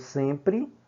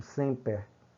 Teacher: Como em português nós falamos sempre, terminado em E, em latim semper. Você pronuncia o E aberto